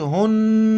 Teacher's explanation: غنہ کریں گے، ناک میں آواز چھپائیں گے